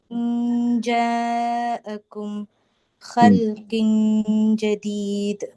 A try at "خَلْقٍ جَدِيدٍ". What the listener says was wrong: ഖൽഖിൻ ജദീദ് അല്ല, ഖൽഖിൻ. അതായത് സുക്കൂനുള്ള നൂനിനും തൻവീനിനും ഇനി വ്യക്തമാക്കാൻ പാടില്ല, അത്രേ ഉള്ളൂ. വ്യക്തമാക്കി പറഞ്ഞു പോരുത്, പറഞ്ഞ പോയി, പിന്നെ ഇഖ്ഫ ഇല്ല.